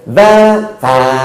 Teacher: Da dengan ta, tempatnya sama. Da ta. Makanya bunyinya beda.